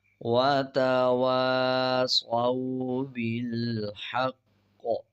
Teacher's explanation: وَتَوَاصَوْا بِالْحَقِّ، قاف پہ جب وقف کریں گے تو قاف کے اوپر قلقلہ ہوگا، قاف کا زیر سائلنٹ کریں گے اور قاف پہ وقف کرتے ہوئے قلقلہ کریں گے۔ شد ہے، مضبوطی سے قاف کو ادا کریں گے۔